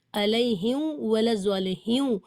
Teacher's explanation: ہمارا میم کا جو مخرج ہے کہ دونوں ہونٹوں کی خشکی سے ملا کر میم ادا ہوتا ہے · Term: میم ساکن